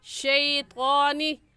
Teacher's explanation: شیء کو کھینچ کر پڑھنا درست نہیں ہے۔ اپنی اس غلطی کو درست کر لیں، نرمی سے اور جلدی سے پڑھ جائیں۔ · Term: یا لین